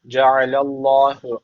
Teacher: Ceallah derken Allah lafzı kalın okunacak. Çünkü önce tekrar üstten bağlanmış.